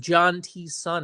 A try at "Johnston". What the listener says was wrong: The T is silent.